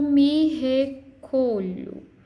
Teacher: a última sílaba tônica aqui é pronunciada com força